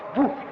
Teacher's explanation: Elle est par conséquent devenue sonore en Wolof et nous avons Bou à la place du P